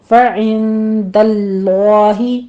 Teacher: فعند اللہ میں نون ساکن کا اخفا کی ہے، 2 کاؤنٹ کریں گے، آگے لفظ جلالہ کو پر پڑھنا ہے